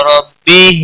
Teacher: را زبر کی وجہ سے پر پڑا جائے گا